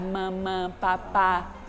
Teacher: papai e mamãe são fonemas bilabiais, ou seja, junta lábio com lábio